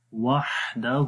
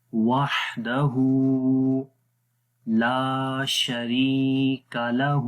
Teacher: ہا کو لمبا کریں گے، اس کے اوپر الٹا پیش ہے، الٹا پیش کو بھی 1 سیکنڈ لمبا کرتے ہیں